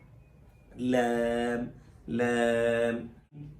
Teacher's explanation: لام کے اندر زبان کا زیادہ حصہ لگتا ہے اور را میں زبان کی نوک لگتی ہے. یہاں نوک کے ساتھ کچھ حصہ طرفوں کا بھی لگتا ہے، سائڈوں کا بھی تھوڑا تھوڑا حصہ لگتا ہے.